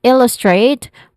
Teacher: illustrate where the first syllable ill is a stressed syllable